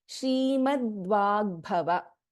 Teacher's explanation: we have Alpa Prana Ga and Mahaprana Bha in this Samyuktakshara